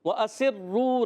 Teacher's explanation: را مشدد ہے، ذرا رک کر ادا کریں گے، اور واو مدہ ہے، واو ساکن سے پہلے پیش بھی ہے، واو مدہ ہوگا، ایک الف کھینچنا بھی ہے۔